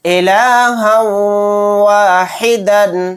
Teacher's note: اب ہم سمجھیں گے ادغام واو، الہا واحدا، الہا واحدا، ہا کے اوپر تنوین ہے تنوین کے بعد واو آ گیا تو یہاں پر بھی ادغام واو یعنی ادغام مع غنہ کا قاعدہ ہوگا۔ ہا کو واو میں ملاتے ہوئے تھوڑی دیر آواز کو روک کر غننے کے ساتھ پڑھیں گے